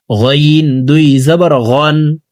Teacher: হলকের শেষ থেকে গইন হরফের উচ্চারণ করব।